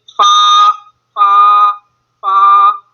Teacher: آپ سب سے پہلے فا کی طرف، فا جو ہے یہ ہونٹوں اوپر کے دانتوں کے کنارے اور نچلے ہونٹ کے تر حصے سے ادا ہوگا۔ یہ نچلا ہونٹ ہے، اس کا جو اندر والا حصہ ہوتا ہے، ایک تو باہر والا حصہ ہوتا ہے جو سامنے نظر آ رہا ہوتا ہے، لیکن جب فیس کو اوپن کریں تو اندر والا جو اندرونی حصہ ہوتا ہے وہ تر حصہ ہوتا ہے، وہاں سے ادا ہوتا ہے۔